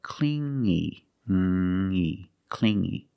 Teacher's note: you hear the sound only the nasal sound here no G